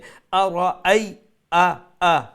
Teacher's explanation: একটা আর আলিফ থাকে না, একটা হইল কি হামজা। তো ওটা হামজা হইল কি শক্ত অক্ষর, গলার নিচ থেকে উচ্চারণ হইব, আর পাওয়ারের সহিত মানে শক্তিশালী উচ্চারণ হইব